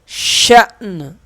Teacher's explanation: جب وقف کریں گے تو نون پہ قلقلہ نہیں کریں گے، صرف آواز آئے گی نون کی